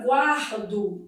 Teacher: Na palavra guardo dividido em sílaba, ó, eu tenho aqui um encontro consonantal imperfeito. O U é pronunciado, é uma semivogal e o A é vogal.